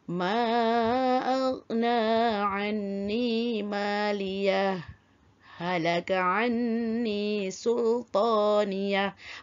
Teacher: memberhentikan bacaan sekadar 2 harakat tanpa bernafas dan menyambung semula bacaan dengan nafas yang sama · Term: saktah